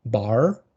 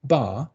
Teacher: the bar thing, the no R, that's the version of pronunciation that King Charles uses